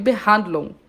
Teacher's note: esse G depois do UN no final, eu quase não falo, né? Eu finjo que eu vou falar, eu faço o movimento e paro, de Behandlung.